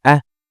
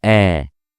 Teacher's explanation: When we pronounce with Fatha, it takes half the duration of pronouncing it with Alif.